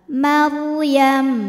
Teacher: Huruf ra dibunyikan secara tafkhim karena didahului harokat fathah, maka ra tebal. Maryam. Di atasnya ada tanda waqaf, al-waqfu aula, berhenti lebih utama.